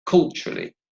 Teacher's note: the word culturally has 3 syllables, so culturally, and the stress is on the first syllable